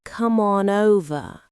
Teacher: When someone says "come on over," it sounds like "come on over." The M sound from come links to on. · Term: linking sounds